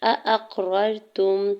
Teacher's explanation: हमज़ा के ज़बर को क़ाफ साकिन के साथ मिलाते हुए कलकला करना है